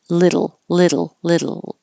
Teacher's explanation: it a little faster little and it just have a a barely moving your tongue down from the L position down back up for the D sound um little little little so it's very small movement little bit